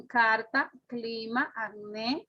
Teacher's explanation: La letra C puede representar dos fonemas. Uso oclusivo, velar sordo ante las vocales A, O